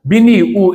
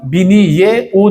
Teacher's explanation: biniy u emas, balki biniye u deb o'qiladi, garchi yozuvda hech narsa qo'shilmasa ham